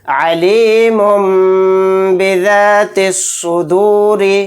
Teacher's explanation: تنوین ہے، تنوین کے بعد با آ گیا تو یہاں پر میم کو میم سے ملا کر غنہ کے ساتھ پڑھیں گے